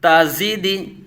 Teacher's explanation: زا کو سختی سے سٹی کی طرح تیز آواز